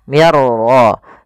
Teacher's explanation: masukkan nunnya kepada huruf ra sehingga suara nunnya hilang, langsung terbaca dengan jelas suara ra-nya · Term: idgham bila gunnah